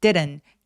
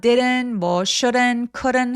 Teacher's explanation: didn't 할 때 두 번째 T는 굴러가는 느낌 나죠? didn't 이렇게 르처럼 소리를 낸다.